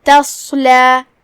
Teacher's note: کلمت تصلا میں یہاں بھی حرف الصاد ہے، ہم اسے بھاری آواز میں ادا کریں گے. دھیان رہے ہم تا کو تفخیم سے نہیں پڑھتے کیونکہ تا حروف ترقیق میں سے ہے، صرف صاد کو بھاری آواز میں پڑھنا ہے